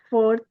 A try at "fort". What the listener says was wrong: Just make sure we're not pronouncing the fort, the t very emphatically. We don't need it. So fort.